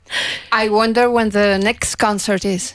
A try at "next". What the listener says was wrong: Good. A bit more T in next.